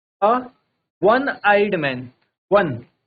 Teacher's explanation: O pronounced like W is a consonant sound like and takes a। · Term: डब्ल्यू साउंड